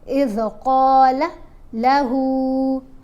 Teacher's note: اذ قال لہو، ہا کو 1 الف جتنا لمبا پڑھا کھڑا پیش ہے، اس ہا کو 3 الف جتنا لمبا پڑھنا ہے